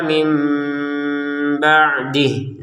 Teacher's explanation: yang awalnya kita baca min ba'di, sekarang bacanya sudah mim ba'di, ada unsur samarnya di sini